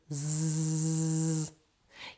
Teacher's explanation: You'll feel that there is vibration from your voice box, and this is because Z is voiced.